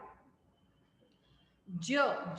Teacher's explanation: it's a voiced palato-alveolar fricative